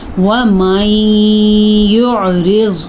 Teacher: نون ساکن کے بعد یا آیا ہوا ہے تو یہاں پہ ادغام بالغنہ ہوگا. یہاں پہ ہم نے ضرور غنہ کرنا ہے.